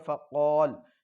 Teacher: फ़क़ाल जब वफ़ करेंगे तो ये हो जाएगा फ़क़ाल, इसलिए कि यहाँ पर क़ाफ़ के बाद अलिफ मद्दा फिर लाम, तो इसको खींच कर पढ़ेंगे, इसलिए कि क़ाफ़ के बाद अलिफ मद्दा, मद्दा के बाद सुकून, लेकिन ये आर्जी होने की वजह से मद्द आरिज़ होगा, थोड़ा सा खींचते हुए पढ़ेंगे